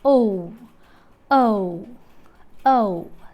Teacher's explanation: a glide from a central unrounded vowel between half close and half open to a back rounded vowel just above half close · The lips are unrounded for the first element and rounded for the second element.